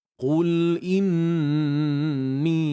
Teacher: Nun bersabdu wajibul ghunnah kat sini wajib kita dengung kemudian kadar dengung lebih kurang dalam dua harakat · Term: wajibul gunnah